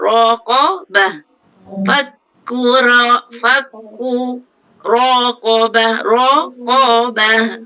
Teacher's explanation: Fa nipis, kaf nipis, yang tebal ro bari atas, ro ko. Itu saja tebal.